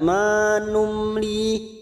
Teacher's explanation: mim sukun bertemu lam idhar safawi, kita baca jelas.